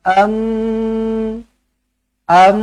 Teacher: tanwin bertemu dengan mim sabdu terus rapatkan bibir dengungkan dua harakat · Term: idgham Al ghunnah